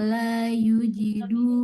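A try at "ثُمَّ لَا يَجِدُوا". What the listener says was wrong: Yajidu bukan yujidu. Summa la yajidu. Ya, ya-nya dia berharokat fathah bukan dhamma.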